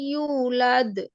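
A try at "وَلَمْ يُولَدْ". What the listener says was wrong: ইউটা টান হবে আপনার। এটা কেন টান হবে বলেন তো ওটা?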